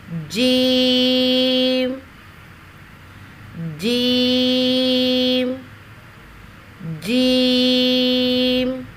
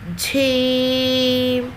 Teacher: جیم کی ادائیگی میں جھے کی آواز مکس نہ کریں، جیسے جھیم، جھے کی آواز مکس نہ ہو تو یہ غلط ہو جائے گا۔